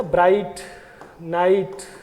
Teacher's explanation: diphthong I is repeated here twice in a line